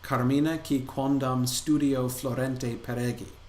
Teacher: The first line is a standard line of dactylic hexameter, 6 feet, mixing of dactyls and spondees